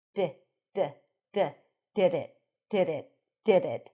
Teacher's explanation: And when you pronounce it just with a tip, just this, there's less contact, less friction, duh, and we hear that light tap.